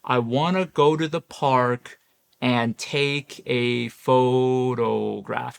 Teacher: Maybe you dip down a little at photograph, but it's it's mostly flat.